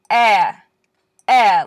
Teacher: the hard version because it doesn't have the little Y sound in front